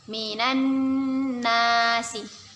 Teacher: Kita baca dengan berdengung dan kita tahan 2 harokat. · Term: gunnah